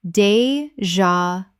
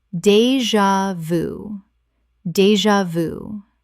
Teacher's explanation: Three syllables with the j making a z sound.